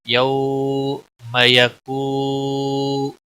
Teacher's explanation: گا، وقف بالابدال ہوگا۔ وما ادراک ما القارعہ، یوم یکون الناس، یو واولین ہے، نرمی کے ساتھ تھوڑا کھینچ کر ادا کریں گے